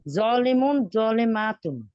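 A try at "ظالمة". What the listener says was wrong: জলিমাতুন মাত হবে না।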